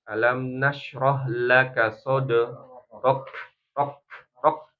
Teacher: Udaranya dikeluarkan, rok, ya, ak, ya. Jadi berhenti dulu suaranya, syiddah, kemudian hams. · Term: kaf sukun